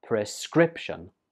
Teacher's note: This word has three syllables and the stress goes on the second syllable